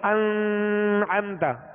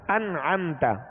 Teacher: نون ساکن کے بعد عین آ گیا، عین حروف حلقی میں سے، عین حروف حلقی میں سے، اب یہاں غنہ نہیں کریں گے، انعم، اب اس میں قلقلہ بھی نہیں کریں گے، انعم نہیں کہیں گے، بلکہ سکون جمعوں کے ساتھ ادا ہوگا اور غنہ نہیں کریں گے، انعمت، ٹھیک ہے؟ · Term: اظہار